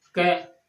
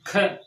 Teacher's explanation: ज्यादा वायु बाहर निकलती है, तो ख कौन सा वर्ण होता है? महाप्राण